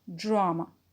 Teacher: Drama is a noun, and the stressed syllable is the first one